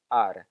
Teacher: his R is a single event